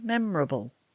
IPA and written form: ˈmem.rə.bəl (memorable)